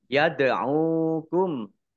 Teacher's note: Sin dumah wawu sukun mat tobi'i, panjang 2 harokat. Yad'ukum, dal sukun bacaan kolkolah, dibaca memantul, ditampakkan pantulannya